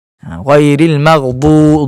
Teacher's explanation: 2 harakat panjang disebabkan adanya huruf waw mat selepas dia